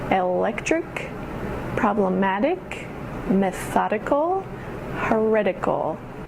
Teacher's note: the emphasis goes on the syllable right before the ick or ickle ending